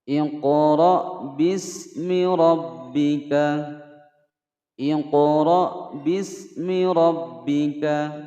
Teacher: Qaf berharokat sukun berada di tengah-tengah kalimat ya, dipantulkan. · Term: Qalqalah